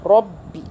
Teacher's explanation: तशदीद वाले हर्फ में दो आवाज़ें होती हैं, यानी कि इसमें दो बा होंगे, एक साकिन वाला, दूसरा बा ज़ेर वाला, ठीक है।